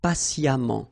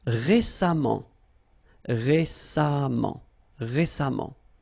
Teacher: even if you write it EMMENT, phonetically it goes like amant